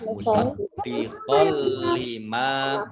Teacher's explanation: qaf fathah tanwin bertemu dengan huruf lam, ini bacaan idgham bila gunnah. Itu masuk dengan tidak mendengung. Lamnya dibaca double karena ada tasdidnya.